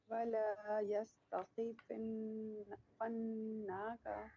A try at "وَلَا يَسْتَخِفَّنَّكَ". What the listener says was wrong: فنك نون کو کھینچے نہیں